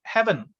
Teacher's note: we just remove the last, the vowel in the last syllable. We have two syllable heaven, so we remove the e. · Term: syncope